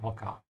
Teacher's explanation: There's also a dot under the o of Hocker to tell you that the emphasis when you pronounce is on the o.